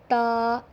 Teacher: زبان کی جو نوک ہے وہ اوپر دونوں دانتوں کے نیچے لگے. تو ہم اس کو ادا کریں تا.